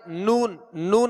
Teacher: नाक से आवाज भी लौट रही है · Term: गुन्ना